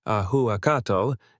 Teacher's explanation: The he-u combination and the final tl sound, which is a lateral affricate, do not exist naturally in Spanish phonology.